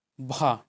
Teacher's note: भा बोलने पे देखिए आपका दोनों ओठ स्पर्श कर रहा है। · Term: ओष्ठ व्यंजन